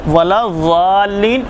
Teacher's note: ज़बान का किनारा बाएं तरफ का ऊपर के दाढ़ों से जब टकराएगा तो ज़ाद अदा होगा।